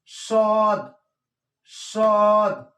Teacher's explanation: সদ উচ্চারণ হবে মোটা করে 1 আলিফ টান , এখানে একটি দাগ দেওয়া আছে, 1 আলিফ টান হবে, সদ,